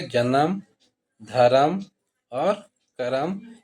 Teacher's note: नागपुर में जो शब्द के आखिरी में अ जो जुड़ता है वो नहीं जुड़ता है